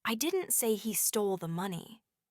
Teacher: If you emphasize stole, it means he did something else with it, not stole it. But if you say, I didn't say he stole the money, with emphasis on he, it implies someone else was the thief.